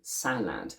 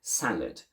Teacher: of the schwa is to replace full sounds in unstressed syllables since the second syllable of this word is unstressed we don't keep a full a sound we don't say salad but we reduce it to the schwa